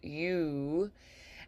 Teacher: we draw the corners of the lips in and round and protrude